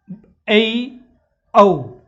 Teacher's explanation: तो ध्यान रखना विवर्त स्वर का मतलब होता है ऐसा स्वर जिसमें मुख आपका पूरी तरह खुलता हो, उसके अंतर्गत आता है आ। अर्ध विवर्त का मतलब होता है कि ऐसा स्वर जिसके उच्चारण में आपका मुंह है वो क्या है कि आधा ही खुले